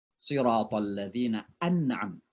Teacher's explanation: Kemudian salah satu huruf dari 6 ini setelahnya, ya setelahnya, apakah itu hamzah, apakah itu ha, apakah itu ain, apakah itu ha, apakah itu ghain, apakah itu kha, maka nun mati itu dibaca jelas, namanya izhar.